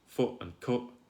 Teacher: for me foot and cup they rhyme perfectly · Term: foot strut split